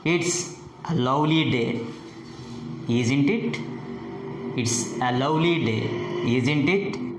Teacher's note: Here the pitch falls on the tag question. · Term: question tags